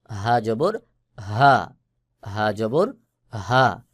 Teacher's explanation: হা হলকের শুরু থেকে উচ্চারণ হবে, মোটা করে আওয়াজ হবে